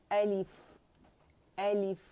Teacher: حمزہ جو ہے وہ deepest part of the throat ہے, وہاں سے اقصی الحلق, ٹھیک ہے, یہاں سے نکلے گا حمزہ, ٹھیک ہے.